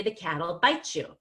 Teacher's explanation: the T and the Y blend together to become a CH. And that helps us focus less on the pronoun you, because CH is kind of halfway between the T and the Y. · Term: blending